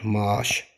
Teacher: Əgər sözün tərkibində qoşa a, qoşa i və qoşa ə varsa, bunlardan biri düşüb, digəri uzun tələffüz edilər. Maaş şəklində, saat şəklində.